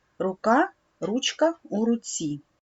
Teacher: у руці в цих словах у нас корінь рук руч руць відбувається чергування звуків в корені слів к ч ць